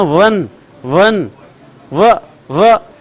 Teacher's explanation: इसमें ऊपर का दांत निचले होठ को टच करता है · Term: दंतोष्ठ